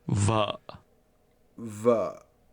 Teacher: In Vietnamese, the word for wife is pronounced with a low, falling, broken tone.